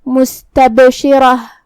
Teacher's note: قلقلہ کا معنی ہے حرف ساکن کو ہلانا، لہذا ہمیں با کو ہلاتے ہوئے یہ کلمہ کو ادا کرنا ہے · را کا حکم ہے تفخیم، کیونکہ اس پہ زبر ہے تو ہم اسے بھاری آواز میں پڑھیں گے